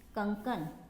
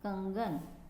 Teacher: तो ये जो दो क थे व्यंजन उसमें से एक जो है वो ग में बदल गया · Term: विषमीकरण